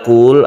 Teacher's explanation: lamnya kita baca secara tawasut tengah-tengah